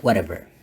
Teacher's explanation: So the reason is karena di gaya Amerika kalau bunyi T-nya diapiti oleh two vowel sounds like kayak gini, bunyi T-nya menjadi flap D or soft D.